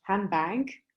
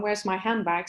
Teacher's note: So de is not pronounced, and also then becomes more like handbag, because of the following bilabial b. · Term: assimilation